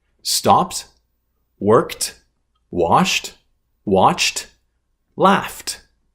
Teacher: Verbs that end with a p, k, s, sh, ch, and f sound, the ed is pronounced as t, as a t sound.